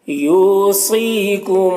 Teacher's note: یو یہاں پر واو مدہ ہے، اسے ایک الف کے برابر کھینچ کر پڑھیں گے۔ سی میں صاد کو پر پڑھیں گے، حروف مستعلیہ میں سے ہے